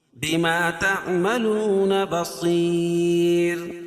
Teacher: رائے ساکنہ سے پہلے یا ساکن ہو تو رائے ساکنہ ہر حال میں باریک پڑھی جاتی ہے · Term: را باریک